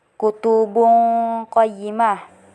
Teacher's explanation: Dan ayat ketiga terdapat hukum ikhfa, yaitu di bagian kutubun qayyimah karena tanwin bertemu dengan qaf, jadi dibaca dengan agak samar